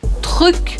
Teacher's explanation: Então, você vai treinar tanto o som do R, lembrando que é aqui no meio da garganta, quanto o som do U, lembrando que você precisa fazer e manter o biquinho